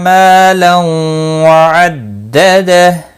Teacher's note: تنوین کے بعد یرملون کا واو ادغام باگنہ ہوگا، اس کو 1 الف کے برابر کھینچ کر پڑھیں گے۔